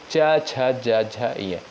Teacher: च वर्ग के अंतर्गत जितने भी वर्ड आते हैं उनका उच्चारण स्थान होता है तालू